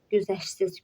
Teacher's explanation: Güzəşsiz sözündə şt hərf birləşməsi var və ştdan sonra samit gəldiyinə görə t düşəcək. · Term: Səs düşümü